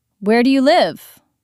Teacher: Voice goes down on live.